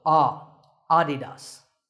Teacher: the correct pronunciation is with the stress on the first syllable